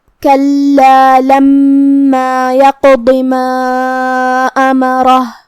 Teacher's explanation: کلمت کلا میں لام کے تشدید کا دھیان رہے، 2 حرف کے برابر ہمیں حرف اللام کو پڑھنا ہے